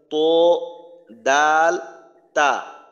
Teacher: number মাখরাজের সাথেও আমরা আগের থেকেই পরিচিত 11 নাম্বার মাখরাজটা হলো জিহ্বার আগা সামনের উপরের দুই দাঁতের গোড়ার সঙ্গে লাগাইয়া উচ্চারিত হয়